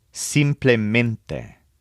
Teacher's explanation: put a slight stress on simp and a strong stress on ment